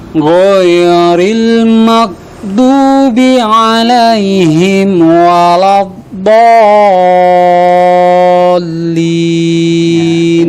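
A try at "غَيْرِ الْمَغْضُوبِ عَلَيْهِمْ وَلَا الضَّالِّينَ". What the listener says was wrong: Pertama, go-nya itu ketika kita mengucapkan satu huruf go, mungkin agak tepat gitu ya. Tapi masuk di ayat jadi ghairil, kayak ada awalannya.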